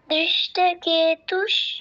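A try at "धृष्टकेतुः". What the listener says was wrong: দৃষ্ট নয়, ধৃষ্ট, ধৃষ্ট, ধৃষ্ট কেতুষ।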